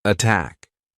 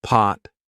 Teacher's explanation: pot versus attack right aspirated attack not aspirated pot